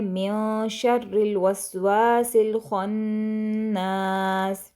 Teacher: ख्वा को मोटा पढ़ेंगे और नून पर हमने करना है गुन्ना।